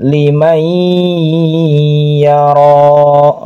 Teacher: nun sukun ketemu ya namanya idgham bigunah di ya nunnya hilang ya kemudian masuk kepada ya